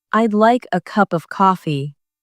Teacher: The stress falls on like cup and coffee.